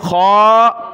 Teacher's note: خا کو اوپر کھینچا موٹا کر کے